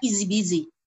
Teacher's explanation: diucapkannya harus di-link, digabung sehingga huruf H-nya hilang. Jadi seolah-olah dibaca easy busy, nggak ada H-nya.